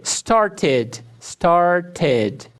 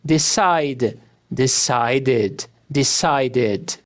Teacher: O ED é pronunciado como ID quando o verbo termina com sons de T ou D. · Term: som de ID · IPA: /ɪd/